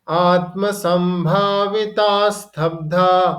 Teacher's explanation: जो विसर्गम के बाद स है, तो जब हम प्रोनाउंसिएशन करेंगे तो संभावितास कर देंगे